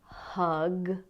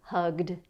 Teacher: if it ends in a voiced sound, like in the verb hug, then we add the sound d